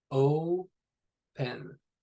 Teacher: you don't really have much of a w, the wispy kind of w sound with it. It's just open.